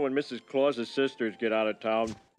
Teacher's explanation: we can hear the t in the word get being pronounced as a flap t which then connects to the vowel sound in the word out